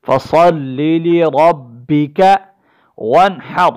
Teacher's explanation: فا زبر فا، صاد لام زبر صل، لام زر لی، فصل لی، لام زر لی، را با زبر رب، با زر بی، فصل لی ربک وانحر، ون پر غنہ نہیں ہوگا اس لیے کہ نون ساکن کے بعد حروف حلقی میں سے ہا آ چکی ہے، یہاں پر اس پر غنہ نہیں کریں گے ہم۔ وانحر، اس را کو بھی موٹا پڑھیں گے حالت وقف میں، چونکہ یہ ساکن ہو چکی ہے